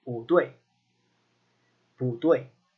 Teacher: So, or rather, when it's followed by another fourth tone, it's not always a fourth tone. When it's followed by a fourth tone character, it becomes a second tone character.